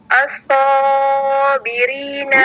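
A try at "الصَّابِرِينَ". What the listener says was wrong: Kepanjangan ya. Huruf so-nya itu berapa harokat, ukhti? Berapa harokat? Nah, 2 harokat ya. Jadi cukup di ayun. As-sabirina.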